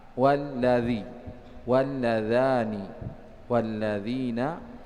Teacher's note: Dan semua lam ini masuk, ya, dibaca idgham atau dimasukkan ke huruf setelahnya apabila terletak setelahnya itu lam, ya. Ada lam kemudian bertemu dengan lam, maka dimasukkan ke lam berikutnya